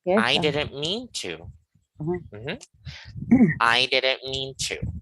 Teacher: you have to raise the stress on the third word